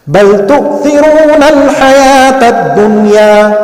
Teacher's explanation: we should read this word ad-dunya with the idhar of noon sakin